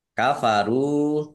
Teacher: ro domah wawu sukun juga mat tobi'i dibaca panjang dua harokat